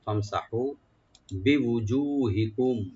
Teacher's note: বিউজুহিকুম, ফামসাহু, ফাটাকে open রাখবে, মিম সাকিন এখানে আমরা জাহার করব, ফাম, সিনটাকে ওপেন রেখে হাটাকে একারে টানবো, ফামসাহু বিউজুহিকুম, ওয়াজু মানে ওয়াজ, এটা প্লুরাল হলো ওয়াজু, মানে চেহারাগুলো, তোমাদের চেহারাগুলো, বিউজুহিকুম, একালে টানবেন মাঝখানে, আর মিম সাকিন এখানে জাহার করবো আমরা, এটা গুণা হবে না, বিউজুহিকুম এজাহার স্বভাবী।